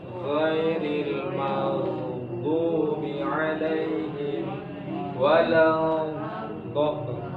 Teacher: perhatikan pada ghainnya ketika dia disukunkan dengan sifat rakhawahnya. Tidak boleh terputus, magdu tidak boleh. Tapi rakhawah itu mengalir.